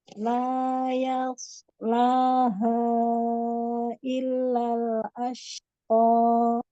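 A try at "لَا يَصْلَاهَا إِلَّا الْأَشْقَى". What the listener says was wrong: Ashqa 2 saja. Kelebihan tadi.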